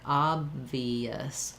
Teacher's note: So to put it together, when I say obvious, the B has my lips closed, and then the V has my upper teeth and lower lip together